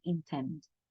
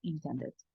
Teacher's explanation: El golpe, por así decir, de la palabra va a ser al final. En lugar de decir intent, va a ser intend.